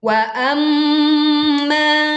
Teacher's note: mim bertasydid dibaca dengan dengung yang sempurna. Ma panjang 2 harokat.